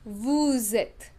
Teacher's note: This is called the rule of liaison. Okay, that we pronounce the last consonant in vous